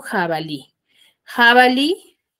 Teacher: palabra por ejemplo jabalí jabali yo lo separo y lo silabeo Dónde tiene la mayor fuerza de voz en Li en la li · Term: acento prosódico